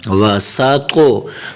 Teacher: طا کو تھوڑا سا قلقلہ دینا، طا کو موٹا بھی کرنا ہے، طا کی اپنی آواز بھی نکالنی ہے، اور طا کو قلقلہ کے ساتھ ادا کرنا ہے۔